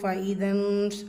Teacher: நூன் சுக்கூனுக்கு அப்புறமா ஷீன். இஃபா நூனை பாதியாக மறைச்சி குன்னா செய்யணும்.